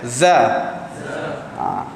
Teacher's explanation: Tapi bila kita sebut za, kadang-kadang terasa sikit. Sebenarnya bukan angin yang keluar, suara kita yang keluar sekali dengan nafas sedikit. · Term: jahar